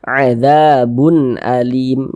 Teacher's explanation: izhar dibaca jelas dia tidak berdengung pendek saja adzabun Alim Jangan dibaca adzabun Alim jangan dipanjangkan seperti itu salah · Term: izhar halqi